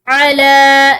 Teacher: मिन फ़ज़लिही अला मन यशाउ, अला, लाम के ऊपर खड़ी जबर, तो इसको एक अलीफ की मिकदार लंबा करके पढ़ेंगे।